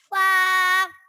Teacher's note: فا اوپر کے دانتوں کے کنارے اور نچلے ہونٹ کے تر حصے سے ادا ہوتا ہے